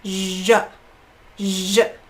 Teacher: So it's zh, zh, usually. So starting out with the zh, dropping to a schwa, zh, zh. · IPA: ʒ